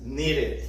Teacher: Y entonces después vamos a analizar que si el verbo termina en D o en T, para poder evitar la repetición de la TT o de la DT, entonces la sílaba de la ED sí se pronuncia completa como una sílaba separada y va a sonar como una ID, como un ID, como una ID, letras ID en inglés.